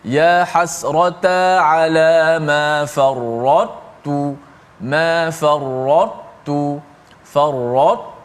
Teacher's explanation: Sifat tebal ta itu dikekalkan, kemudian baru masuk ke dalam huruf ta tanpa qalqalah. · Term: idgham naqis